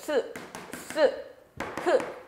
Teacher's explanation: 공기가 지나가는 통로를 좁게 만들어서 공기를 마찰시키면서 발음하는 소리들을 마찰음이라고 하죠